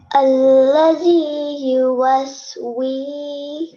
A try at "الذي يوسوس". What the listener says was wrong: No, do not prolong it. So only prolong the wow for 1 second. So alladhi yuwaswisu, that's it. Not alladhi yuwaswisu, okay?